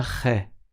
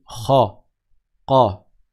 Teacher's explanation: Le kha, il est grave, il est emphatique. On ne dit pas khe.